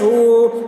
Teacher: وَأُوتِیَ کِتَاب ہا الٹا پیش ہو، ہا کے اوپر الٹا پیش ہے، الٹا پیش برابر ہوتا ہے واو مدہ کے، اس لیے الٹا پیش کو ایک الف کے برابر کھینچ کر پڑھیں گے